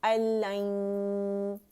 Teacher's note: थोड़ी आवाज़ मुंह से और ज़्यादा नाक से आएगी